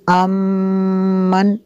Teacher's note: میم مشدد ہے، یہاں پہ غنہ کریں گے۔